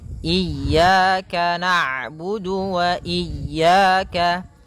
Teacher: Ketika huruf ain berharakat sukun, ain itu punya sifat namanya bainiyah, yaitu bacaan di antara syiddah dan rokhawah. Kalau syiddah suaranya tertahan, kalau rokhawah suaranya mengalir, maka di antara keduanya.